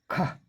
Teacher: ख इसमें भी कोई कंपन नहीं अघोष कंठ स्पर्श ध्वनि ख यह कंठ से पैदा होने वाली अघोष ध्वनि है · ख, ये कंठ से पैदा होने वाली अघोष ध्वनि है।